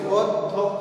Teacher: এই অ এর পরে জ ফলা থাকলে এই অটা হয়ে যায় ও, এরপরে আমরা এটার অক্ষর অনুযায়ী বা সিলেবাল অনুযায়ী আমরা ভাগ করলাম অধ্যক্ষ, তাহলে ওটা হচ্ছে বদ অক্ষর, ধকটাও বদ অক্ষর, আর খটা হচ্ছে মুক্ত অক্ষর, এজন্য এখানে কিন্তু কোনো হর্ষ চিহ্ন ব্যবহৃত হয়নি, অধ্যক্ষ।